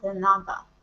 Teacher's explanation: When you pronounce the word de nada, you use you pronounce D as a English TH sound, like because you stick your tongue out your mouth and say de nada.